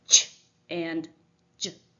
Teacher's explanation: as you produce these sounds you stop the air before releasing it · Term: africat